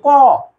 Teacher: কর সাথে দেখো উচ্চারণ করলে অ চলে আসতেছে